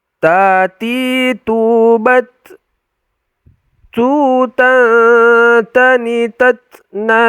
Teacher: ingat ujung lidah kita tempelkan ke Pangkal gigi atas gigi seri atas itu